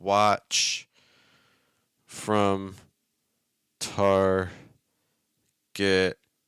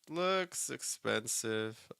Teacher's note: so our stresses on Watch and looks those are the two stresses that I'm hearing in these phrases